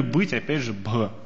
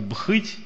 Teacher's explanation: У нас не «бхыть», не «быть», у нас просто «быть». То есть у нас придыхание исчезло.